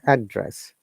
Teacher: so when you're saying address we're stressing on the first part · our voice goes up to down